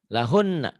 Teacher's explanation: Nunnya bertasdid, gunnah. Lahun bersisa ya kalau dihentikan.